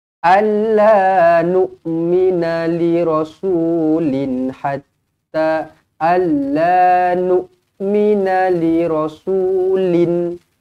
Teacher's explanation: Tanwin selari bertemu dengan ha izharu halqi, jelas dan terang.